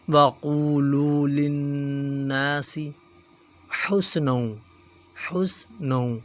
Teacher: نون مشدد ہے، غنہ کریں گے، ناک میں آواز کو چھپائیں گے